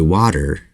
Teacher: the flap T is not the same sound as a d although it sounds closer to a d than it does the T sound in English